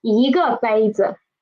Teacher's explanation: When we are learning it individually, it is a fourth tone syllable, but when we are using it as a measure word, it is usually neutral tone, so it is not 一个杯子 it's 一个杯子So in this phrase, 一个杯子 there are two neutral tones. One is 个 one is 子